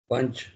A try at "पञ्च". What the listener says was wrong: Pancha, not Panch. Pancha.